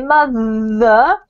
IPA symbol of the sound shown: ð